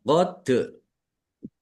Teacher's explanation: dal sukun bacaan kolkolah dibaca memantul ditampakkan pantulannya.